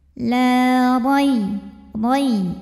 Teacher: huruf ra dibunyikan secara tafkhim sebab barisnya fathah, maka dibacanya tebal.